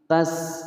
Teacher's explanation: Wala panjang 2 harokat mad tabi'i, sin berharokat sukun, ada suara angin